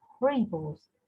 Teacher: The part re will be unstressed. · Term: unstressed syllable